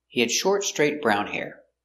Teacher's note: we stress important words the adjectives short straight Brown